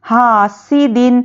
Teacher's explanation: ہا الف مدہ ہے، اس کو ایک الف کے برابر کھینچیں گے، حاسد، اور دال دو زیر دن، یہاں پر کیا ہے، اظہار کا قاعدہ ہے دو زیر کے بعد حروف حلقی آ گیا ہے تو جلدی پڑھیں گے.